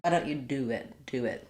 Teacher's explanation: we end up with a little w sound in between